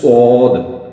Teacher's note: جاتا ہے سود ٹھیک ہے پھر اس کو سواد کو بھی جہاں سے سین وہیں سے سود لیکن موٹا اور ہونٹوں کو گول کیا